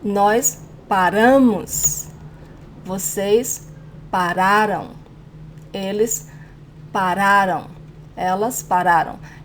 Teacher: Now in the plural persons, it's again, the stronger syllable is the second to last.